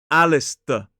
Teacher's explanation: because the s and the t are together, that t sound starts to sound more like a /d/. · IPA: /ˈælɪstə/